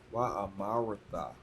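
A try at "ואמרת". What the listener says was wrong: Close. Wa amara. That vowel sound is gonna fall off at the end. The vowel sound is gonna fall at the end. It's just gonna be the consonant vowel.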